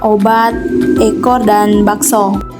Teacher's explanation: fonem O yang memiliki dua alofon yaitu o sedang atas belakang bundar dan o sedang bawah belakang bundar